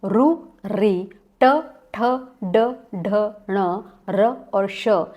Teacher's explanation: रु री ट ठ ड ढ ण र और श, इनका उच्चारण स्थान है मूर्धन्य